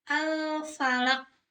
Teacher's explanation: Jadi, pantulan suara lebih kuat dibandingkan qalqalah sugro. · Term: qalqalah kubro